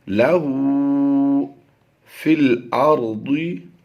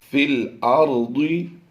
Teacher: فا کو ہم اس لام کے ساتھ ملائیں گے۔ یہ جو یا اور الف آپ دیکھ رہے ہیں ان دونوں کو ہم نہیں پڑھیں گے۔